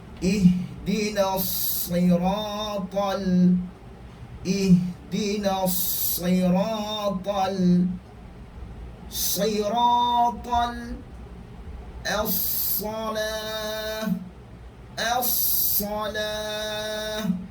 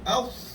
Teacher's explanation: Desiran yang paling kuat adalah desiran huruf sad.